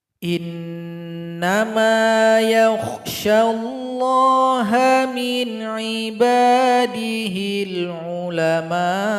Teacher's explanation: Panjang dari mim ini boleh 4, boleh 5 harokat.